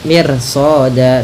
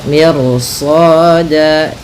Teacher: apabila ada ro sukun sebelumnya dia kasroh dan setelahnya ada huruf isti'la yang mana huruf isti'la, maka di sini ini kita ro-nya kita baca dengan tebal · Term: ro-nya tebal